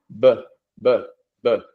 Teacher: It's voice. There's no air. B. I mean, there's a little bit of air, but not no not nearly as much as you feel when you do the P sound. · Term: B sound